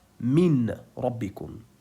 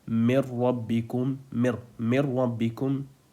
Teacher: I completely skipped the Noon and I also skipped its Ghunnah. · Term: Idgham without Ghunnah